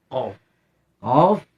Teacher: Qaf posisinya atau makhrajnya berada di aqsal lisan, di pangkal lidah, tempat tubuhnya lidah, berarti agak dalam. Agak ke dalam.